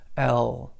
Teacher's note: English is not that kind of an L it's a it's a lighter kind of L L it's softer okay and but the key to it is